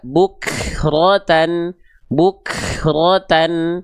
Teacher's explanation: kafnya khususnya dari percikan nafasnya terlampau berlebihan. Bukhrotan enggak cukup dipercikkan enggak usah berlebihan.